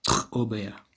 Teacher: If you think, an easy way to remember it is it's basically the same as a velar release or a velar fricative release, but there's a small glottal stop after it.